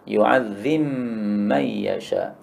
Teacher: ba-nya idgham pada mim maka ba-nya lebur jadi mim